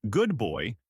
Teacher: the D in good might sound like a B because it blends with the B in boy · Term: Assimilation